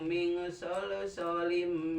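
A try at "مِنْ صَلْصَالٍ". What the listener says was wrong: Panjangkeun min solso. Panjang sol.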